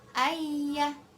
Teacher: Ma'u bacaan mad tabi'i sebab domah bertemu dengan wawu sukun. Ayya ini idgham bighunah sebab nun sukun bertemu dengan ya